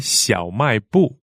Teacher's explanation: 小 is third tone, 卖 is fourth tone, and 部 is fourth tone.